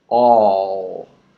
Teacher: now we need to move the tongue up to finish the word with the L